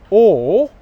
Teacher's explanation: for /ɔː/ as in 'fork' my lips are rounded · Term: long English vowel sound